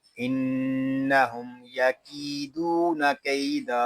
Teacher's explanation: وقت میں پڑھیں گے انہم یکیدون کیدا، دو زبر کی تنوین کو وقت میں ہم الف میں بدل دیں گے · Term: وقف بالابدال